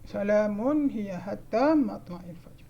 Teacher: Mun ni dia kena baca jelas sebabnya dia izhar. Dia bukannya dengung.